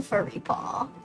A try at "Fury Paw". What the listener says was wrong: Fury Paw is what he said. It's with one R, so it's Fury.